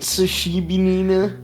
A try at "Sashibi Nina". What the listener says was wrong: You added a few syllables.